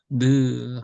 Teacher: 혀 끝이 그 이빨, 이 웃니 위에 살짝 닿으면 내려오는 소리, 이것이 바로 느 하는 거예요.